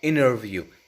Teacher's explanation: So T here just disappears from the word interview. That's it. I would actually say it's substituted by another N, because this N becomes a little longer.